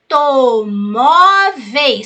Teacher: sílaba tônica penúltima ela é paroxítona